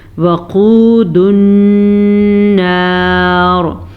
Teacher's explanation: अगर हम यहाँ पे वक्फ कर रहे हैं तो रॉ पुर पड़ी जाएगी क्योंकि रॉ को हमने साकिन कर दिया। साकिन रॉ से पीछे वाले हर्फ पे ज़बर है, इसकी वजह से ये रॉ पुर पड़ी जाएगी, ठीक है। · वक़ूदुन नार, क़ाफ को पुर पढ़ेंगे, वाव मद्दा को खींच के पढ़ेंगे, नून का गुन्ना अदा करेंगे और अगर हम यहाँ पे वक्फ कर रहे हैं तो रॉ पुर पड़ी जाएगी क्योंकि रॉ को हमने साकिन कर दिया।